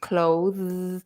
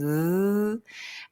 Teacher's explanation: So it's a th. So the tongue, notice how the tongue goes between my teeth to make that sound. Th. And then I'm vibrating.